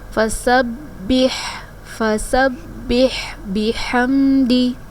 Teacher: با کو جمع اور سختی کے ساتھ بھی ادا کریں گے کیونکہ با مشدد ہے